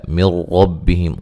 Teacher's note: یہاں نون ساکن کا ادغام ہے لیکن بلا غنہ ہے، غنہ نہیں کریں گے